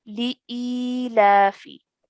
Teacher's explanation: the alif with the kasra followed by a ya mad, we need to stretch for 2 counts. So sometimes what happens, and a common mistake that takes place, is that the lam and the alif are joined together.